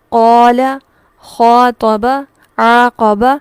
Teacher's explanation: یہاں پر ہم آواز کو دراز کریں گے کتنا؟ ایک الف کے برابر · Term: مد اصلی